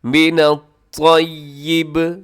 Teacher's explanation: با کے نیچے زیر ہے لیکن وقف کی وجہ سے یہ ساکن ہو جائے گا۔ من الطیب، مضبوطی کے ساتھ آپ نے اس کو پڑھنا ہے۔ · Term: با ساکن